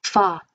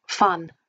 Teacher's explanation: The final ing can become an, so singing, walking, rather than walking. And the initial WH can become F